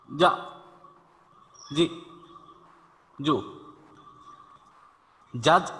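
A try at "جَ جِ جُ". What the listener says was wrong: হ্যাঁ হ্যাঁ, একটু তাড়াতাড়ি হয়ে যাচ্ছে।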